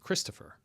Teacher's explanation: when you say Christopher, you don't really fully pronounce the O? The O is reduced because the word is three syllables long. And when words hit three syllables, generally one of the vowels will reduce.